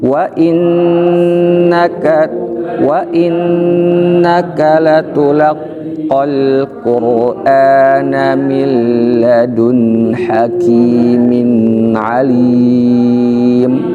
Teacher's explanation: wa ketika bertemu dengan innaka, maka dia harus terpisah bacanya